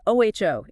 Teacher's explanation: The jaw drops then relaxes up. And crucially the lips round.